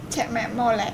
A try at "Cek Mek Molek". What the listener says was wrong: Iya, Cek Mek Molek. L kamu kurang Melayu, L kamu Molek. Bukan gitu ngomongnya, Molek. Cek Mek Molek.